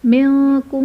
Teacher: منکم میں نون ساکن کے بعد حروف اخفا میں سے کاف ہے تو یہاں بھی غنہ کر کے پڑھیں گے، یعنی اخفا کا قاعدہ ہوگا۔